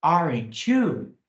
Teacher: Eu subi a entonação aqui no you. O you tem uma entonação mais forte do que o aren't. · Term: entonação ascendente